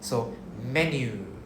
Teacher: we pronounce ME, then we pronounce the NYU. Then the U, long U sound at the back.